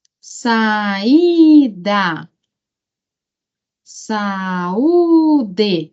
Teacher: saída, saúde, a sílaba tônica I e U